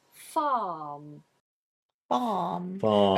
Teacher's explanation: When you're speaking with a West Country accent, we do pronounce the R.